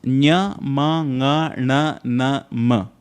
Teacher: nya, ma, nga, na, ma, are all nasal sounds, which means you need the nose to utter these